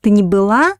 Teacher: so the accent falls on the verb была